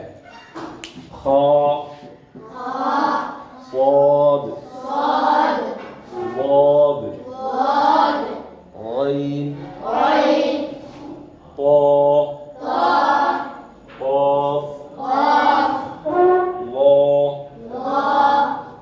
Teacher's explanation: നാവിന്റെ മുരട് അണ്ണാക്കിലേക്ക് ഉയരുന്നതുകൊണ്ട് തഫ്ഹീം ഉണ്ടാവൂ അല്ലേ പക്ഷെ ഇതിന് ചില അക്ഷരങ്ങൾ പറയുമ്പോൾ നാവിന്റെ മദ്യം കൂടി ഉയരണം ല്ലേ